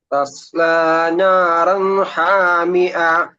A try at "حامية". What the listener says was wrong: ഹാമിഅ അല്ല ഹാമിയ. ഹായ് ഉച്ചാരണം. ഹാമിയ എന്നല്ല. അഥവാ അവിടെ നീട്ടേണ്ട ആവശ്യം ഹാമിയ നീട്ടേണ്ട, അപ്പോഴേ ഫുൾ സ്റ്റോപ്പ് ചെയ്യാം. നീട്ടി നിർത്തണ്ട, നീട്ടാനേ പാടില്ല. കാരണം മദ്ദിന്റെ ഒരു അക്ഷരം അപ്പൊ നമ്മള് പെട്ടെന്ന് ഫുൾ സ്റ്റോപ്പ് ചെയ്യണം.